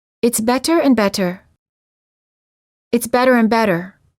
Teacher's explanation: sounds like a fast D sound when it's between two vowels when a t is between two vowels it's generally pronounced like a fast du sound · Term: tapped T